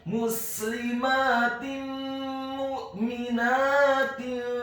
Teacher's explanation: hukum bacaannya adalah idgham bil gunnah, memasukkan dengan dengung